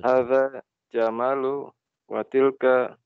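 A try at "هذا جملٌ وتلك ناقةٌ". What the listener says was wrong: Jamal. Pakai tanwin, Pak ya. Hadza jamalun. Jamalun. Hadza jamalun wa tilka naqatun.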